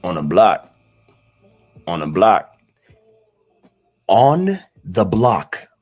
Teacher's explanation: you barely hear the th in the word the. So instead of saying on the block on the block so it becomes onn block on a block.